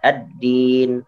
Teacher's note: Jadi dimasukkan ke huruf dalnya. Lamnya tidak dibaca.